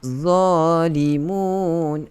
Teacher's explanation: Dha orang awam, dia akan baca zalimun. Dia tak keluarkan lidah dia, tak sentuh pada 2 gigi kacip hadapan. Sedangkan nak sebut huruf dha, kena keluarkan lidah. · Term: dha awam